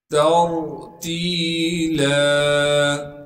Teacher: گے اور تا کو آگے را ساکن سے ملا دیں گے، را ساکن سے پہلے تا پر زبر ہونے کی وجہ سے را کو موٹا کر کے پڑھیں گے · لام پر 2 زبر ہونے کی وجہ سے جب لام پر وقف کریں گے پھر لام کو ایک الف کے مقدار کھینچیں گے